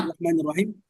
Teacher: চিকন হবে কারণ লামের পূর্বে জের এসেছে